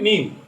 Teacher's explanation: 14 নম্বর মাখরাজ নিচের ঠোঁটের পেট সামনের উপরের 2 দাঁতের আগার সাথে লাগাইয়া ফা, এবং 15 নম্বর মাখরাজ 2 ঠোঁট গোল করিয়া সামান্য খোলা রাখিয়া ওয়াও, এবং 16 নম্বর মাখরাজ 2 ঠোঁটের ভিজা জায়গা হইতে বা, এবং 17 নম্বর মাখরাজ 2 ঠোঁটের শুকনো জায়গা হইতে